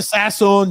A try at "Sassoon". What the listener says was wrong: Sassoon, not Sasson. Sassoon. Soon is soon. Sassoon. Sassoon. Not Sasson.